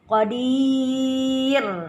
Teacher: bacaan ro adalah dibaca tipis karena sebelumnya bertanda kasrah.